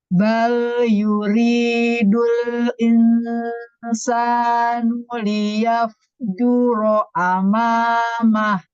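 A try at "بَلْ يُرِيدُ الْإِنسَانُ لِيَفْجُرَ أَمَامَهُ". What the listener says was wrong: Tapi fa-nya kurang hamas, diulang lagi.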